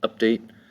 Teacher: Update has 2 syllables. Update, the first syllable up is accented